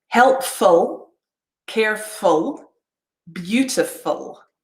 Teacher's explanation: if it's the adjective f-u-l-l we would use a strong vowel sound like ooh fool but because it's a suffix we're saying full